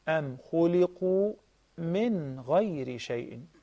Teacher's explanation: You have to pronounce An-Noon, Sakina, the non-vowel Noon clearly. So here, An-Noon, Sakina, is followed by Ghayn.